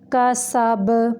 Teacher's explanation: کاف باریک ہے، سین کو سیٹی کے ساتھ پڑھیں گے